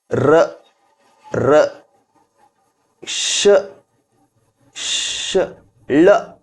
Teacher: ರ ರ ಶ ಶ ಳ ಇವೆಲ್ಲವೂ ಮೂರ್ಧನ್ಯ ಜಾಗದಲ್ಲಿ ಜನ್ಮ ತಾಳುತ್ತವೆ. ಹಾಗಾಗಿ ಇವೆಲ್ಲವುಗಳನ್ನು ಮೂರ್ಧನ್ಯ ವರ್ಣಗಳು ಅಂಥೇಳಿ ನಾವು ಕರಿತಾ ಹೋಗ್ತೇವೆ.